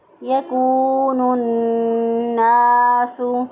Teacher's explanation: نون مشدد پر ہمیشہ گننا ہوتا ہے، تو ایک الف کے برابر گننا کی آواز کو ناک میں ٹھہراتے ہوئے ادا کیا